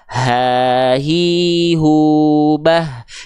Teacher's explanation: Dilafalkan dari bagian tenggorokan paling dalam atau paling pangkal. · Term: ha besar